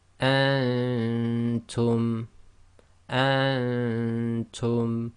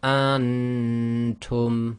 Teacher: So it's hiding the Noon sound, but it's trying to hide it at the same time in the nasal cavity. · The Noon shouldn't be clear, and that's caused by keeping your tongue in the position of the next letter. Or if you find that very difficult, try to just make sure your tongue is away from the roof of your mouth, so it doesn't actually touch the roof of your mouth.